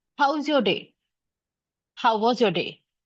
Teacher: My tone rises at the end. Mostly we use upward intonation when we ask questions. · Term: upward inonation